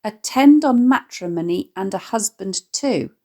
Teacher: here we notice a 12 syllable line written in iambic hexameter